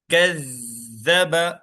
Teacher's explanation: کذب، دیکھیے زال پہ تشدید ہے، اس لیے ہم زال کو دو بار پڑھے، ایک بار کاف سے ملا لیے، ایک بار خود سے پڑھے۔ کذب، زال زبان کی نوک باہر